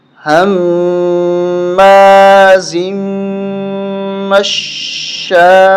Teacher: 4 الف تک ہمیں کھینچنا ہے